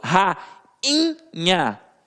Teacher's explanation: quando eu falo rainha o i não tem som de i ele vem com som nasalizados